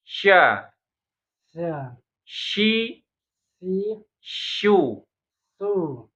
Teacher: tempat keluarnya syin sama dengan tempat keluarnya tengah lidah kita jadi tengah lidah kita naikin ke langit-langit tempelin baru kita ngomong sya sya syi si suu su sya sya sa sa sya sya syi si sya sii s sya sya sya sa sya sya syi si sya sya Iya. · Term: shin